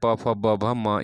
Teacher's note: तो प बोल के देखिएगा तो आपको ओष्ठ, दोनों ओठ सटेगा आपका, इसलिए इसका ओष्ठ्य, ओष्ठ्य इसका उच्चारण स्थान है। प फ ब मतलब प वर्ग के जितने भी शब्द हैं, प फ ब भ म, ये सभी ओष्ठ से उच्चारण होते हैं।